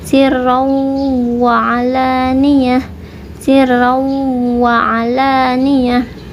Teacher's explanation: ain bukan dari hidung ya, tapi dari tengah tenggorokan. Sirraw, nah habis dari hidung ini idgham langsung ke tengah tenggorokan.